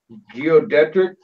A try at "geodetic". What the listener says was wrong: They call it geodetic without the R actually.